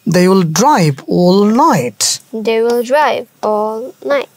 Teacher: ড্রাইভ এটা জোরে বলবো এরপরে নাইট আবার জোরে বলবো